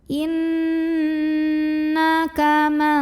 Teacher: Cara bacanya dengung. Bunyi n-nya tahan sampai ada getaran halus ke hidung.